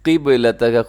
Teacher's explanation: قاف موٹا ہے، با کلکلا کیجیے گا، بلو کلر میں ہے، قبلتک۔